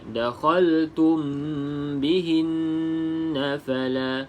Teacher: mim yang kosong ikhfa. Di sini ikhfa syafawi, kita baca dengan dengung 2 harakat